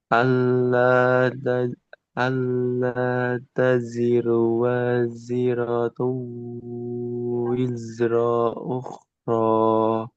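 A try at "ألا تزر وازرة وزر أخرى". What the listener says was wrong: Nah, ini bagus semua zanya. Terus wizro ro-nya cukup satu harokat. Jangan ada tambahan. Wizro ukhro. Langsung.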